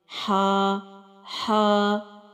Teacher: जो नुक्ते के बगैर वाली हा है व वस्तु हलक से हलक के दरमियानी हिस्से से अदा हुई है · جو نقطے کے بغیر والی ہا ہے وہ وسط الحلق سے حلق کے درمیانی حصے سے ادا ہوئی ہے۔